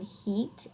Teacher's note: The E in heat is a monophthong. It's just a single vowel sound.